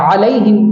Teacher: علیہم کے عین کو ہمیں بیچ حلق سے نکالنا ہے